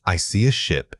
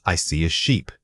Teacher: The difference is purely the length of the vowel sound, short versus long.